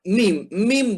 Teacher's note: Mim dia lebih rapat. Dan mim ini keluar dari dua bibir. Tapi suaranya keluar dari hidung juga. Sebab apa? Makhraj sudah tertutup.